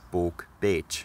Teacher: the k turns into a ch in the plural, balk, bitch, because of a change called palatalization that affected the k sound wherever it occurred around the vowels e, e, or a in Old English.